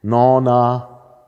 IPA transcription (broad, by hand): ˈnɔna